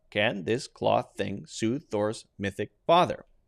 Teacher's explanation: all we do is turn off the voice when we reach thor but the tongue is not going to move the tongue is going to stay in the exact same position